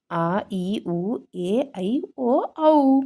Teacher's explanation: 2 ಮಾತ್ರ ಕಾಲದಲ್ಲಿ ಉಚ್ಚರಿಸುವ ಅಕ್ಷರಗಳನ್ನು ದೀರ್ಘ ಸ್ವರಗಳು ಎನ್ನುತ್ತೇವೆ ಮಕ್ಕಳೇ.